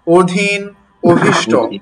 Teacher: শুরুতে অধনির পর রসই অথবা দীর্ঘই কিংবা এসবের কার চিহ্ন থাকলে অধ্বনির উচ্চারণ ও এর মত হবে